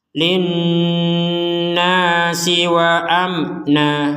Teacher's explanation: ada Nun bertasdid kita membacanya dengan dengungan